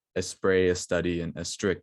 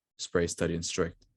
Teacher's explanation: a spanish speaker would say english words such as a spray a study and a strict instead of spray study and strict